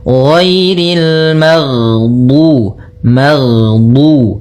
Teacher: Nah, tapi dia juga termasuk sifat huruf yang dia sifatnya adalah jahr, jahr yaitu tertahannya nafas kita. Jadi ketika melafalkan ghain, nafas kita tertahan, suara kita dialirkan.